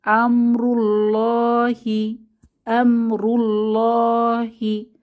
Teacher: রয়ের উপরে দম্মা বা আল্লাহ শব্দের আগের হরফে দম্মা থাকায় এখানেও আমরা মোটা করে ধ্বনিতে লামকে পড়ব